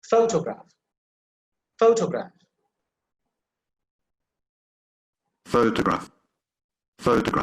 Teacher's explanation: You see the emphasis on the first syllable